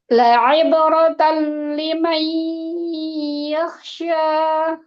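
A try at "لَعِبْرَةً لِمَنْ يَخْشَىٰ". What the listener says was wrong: Baik, barakallahu fiik. Nanti dilatih lagi untuk qadar gunnahnya.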